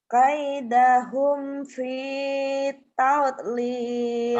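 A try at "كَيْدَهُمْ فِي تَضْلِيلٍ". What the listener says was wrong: Ya, D-nya kurang. Kaidahum fi tadlil.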